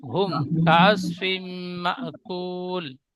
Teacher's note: মিম সাকিনটা مأكول একটু খেয়াল করে পড়বেন, ফাজা আলা হুম বলে গুন্না করবেন না, মিম সাকিনের পরে বা মিম ছাড়া অন্য অক্ষর কাফ এসেছে, তাই মিমকে বিনা গুন্নায় মিলিয়ে পড়তে হবে, একে ইজহারে সাফাবি বলে।